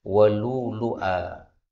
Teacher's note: walu'lu'a, hamzah pertama diganti wawu boleh